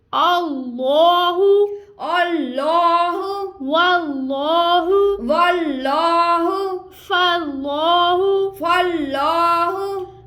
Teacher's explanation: अपनी ज़बान की जड़ को ऊपर की तरफ बुलंद करते जाना है। जब हम ऊपर की तरफ बुलंद करेंगे तो ये लाम खुद ब खुद मोटा पड़ा जाएगा।